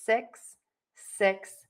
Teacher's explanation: the word 6 is going to have a more closed mouth, and the tip of your tongue is going to be high and behind your top teeth, but it is not touching.